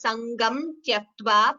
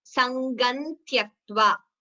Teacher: You can also chant it as Sangam Tyaktva, pronouncing the Anuswara completely, or Sangan Tyaktva when you combine the Sandhi.